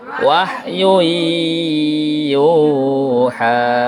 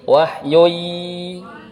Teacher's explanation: Namanya idgham bi gunnah. Bukan panjang, itu dengung. Pas tasdidnya dilamakan.